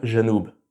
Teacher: il est plutôt prononcé je, comme en français. C'est le cas en Syrie, au Liban et dans une grande partie du Maghreb. Donc par exemple pour dire le sud, Janoub en arabe classique, en libanais on va dire Janoub.